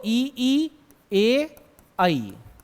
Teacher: इनके उच्चारण में जीभ के अग्र भाग का प्रयोग होता है